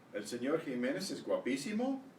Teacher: make sure you're getting these questions rising at the end